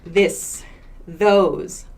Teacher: voiced TH sounds, so that means we use our vocal cords to make the sound